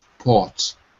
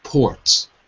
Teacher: So in British English, it's ah. In American English, it's or.